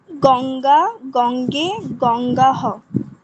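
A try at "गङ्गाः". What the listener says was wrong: গঙ্গা হ নয় কিন্তু, গঙ্গাহ। বিসর্গের উচ্চারণের নিয়ম হচ্ছে যেই স্বরবর্ণের পরে বিসর্গ হবে, মঞ্জু মিউট করুন, যেই স্বরবর্ণের পরে বিসর্গ হবে বিসর্গের উচ্চারণ সেই স্বরবর্ণের মতোই হবে। যেরকম দেবাহা, এখানে অকারের পরে হয়েছে, তাই না?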